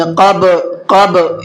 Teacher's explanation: من قبل، اور دوسرا قاف کو پر کر کے پڑھیں گے، منہ بھر کے پڑھیں گے اور با کے اندر قلقلہ کریں گے